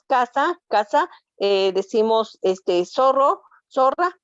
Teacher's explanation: En algún momento cuando vimos el uso de cada una de ellas, yo les hablaba mucho del ceseo, ¿verdad? Porque si es C, si es Z, nosotros automáticamente la pronunciamos igual